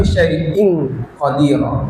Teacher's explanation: Ini ikhfa disamarkan lalu didengungkan.